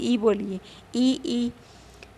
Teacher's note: ई कहने से हमारी आवाज़ जो है आगे की तरफ भाग रही है, आगे को बोल रही है, इसलिए इनको अग्रस्वर कहा गया